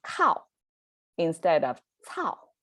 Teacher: same vowels, same falling tone, but changed, almost like a similar looking, sounding consonant as well.